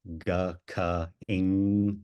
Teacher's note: Yeah, so in the back of the mouth, like G, K, and NG, G, K, ing is all the back of the tongue up on the soft palate on the roof of the mouth